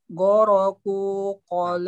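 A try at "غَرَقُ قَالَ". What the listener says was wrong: Ku-nya juga pendek. Goroku qala. Ini termasuk lahan jali Pak ya? Hati-hati Pak ya. Ku-nya kan harusnya pendek. Goroku qala. Tapi antum malah goroku gitu ya. Malah sedikit panjang gitu lah ya. Nah, hati-hati Pak ya.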